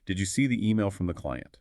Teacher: I think you've probably seen an important email, but I need to confirm. So I'll use a rising intonation targeting the key confirmation point, which is client.